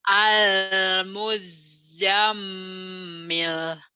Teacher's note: M-nya ditahan. Kalau Z-nya nggak ditahan, cuma double doang.